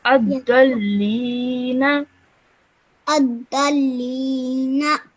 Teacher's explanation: This alif over here would be a silent alif, so you would drop that alif, straight away join the dal to the lam